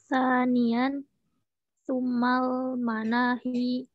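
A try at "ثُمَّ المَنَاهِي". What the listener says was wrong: Summa bertasdid mimnya, huruf atop.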